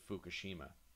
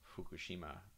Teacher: in japanese it's kind of half f and half h